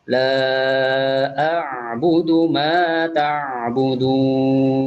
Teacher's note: Jadi ain dan juga makhrajnya di tengah tenggorokan ketika diucapkan